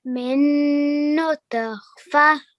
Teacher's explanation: Why did I make a jerking sound on the ta? Because it's قلقلة.